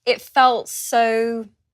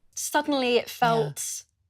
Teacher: Here, making a clear t sound.